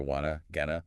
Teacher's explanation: They're said more quickly, often with reduced vowel sounds. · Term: reductions